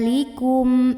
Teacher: Mbak yaitu huruf hamzah maka cara membaca mimpi sukunnya ini adalah dibunyikan dengan jelas bunyinya m dan tidak ditahan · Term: izhar syafawi